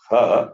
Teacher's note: The last letter, ha, it is aspirate, not non-aspirate.